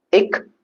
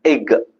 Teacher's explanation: Ik, it is unvoiced. Ig, it is voiced. When you pronounce ig, g sound, you will have vibration.